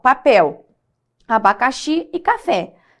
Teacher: você percebe que a última sílaba mais forte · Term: oxítonas, oxítona